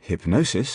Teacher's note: So in hypnosis, for example, the middle syllable receives accentuation.